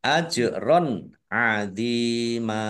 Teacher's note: Nun kasroh ya sukun mat tobi'i panjang dua harokat ajron adima fathah jim sukun bacaan kolkolah dibaca memantul ditampakkan pantulannya